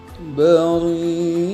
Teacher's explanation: disebut mad wajib mutasil karena mad tabi'i bertemu dengan hamzah yang berada pada satu kata dan membacanya dibaca panjang 6 harokat